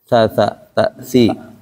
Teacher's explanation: Ujung lidah nempel ke ujung gigi atas.